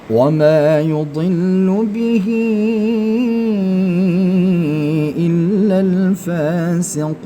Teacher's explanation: Ketika ha ini bertemu dengan alif maka dia menjadi madilah thawilah panjang empat harakat.